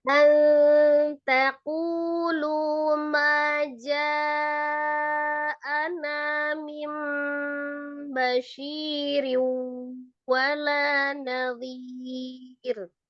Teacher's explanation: Ma-nya 2 harokat aja. Ma 2 harokat, ja-nya baru 4.